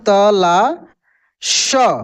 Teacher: ये दोस्तों तलव्य श है, इसका उच्चारण तालु से होता है